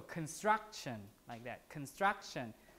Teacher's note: Unaspirated, because it's after an S.